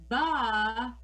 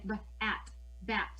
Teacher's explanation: the letter B represents b, not ba, not putting that extra on the end of it, but it's a popping of the lips, b, and helping our students to understand that sound.